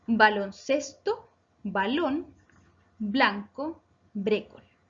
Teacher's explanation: baloncesto, blanco y brécol, el acento está en la penúltima sílaba, por lo tanto son palabras graves